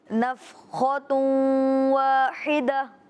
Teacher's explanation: इदगाम माल गुन्ना, यानी कि तनवीन को वाव से मिलाएंगे भी और गुन्ना भी करेंगे।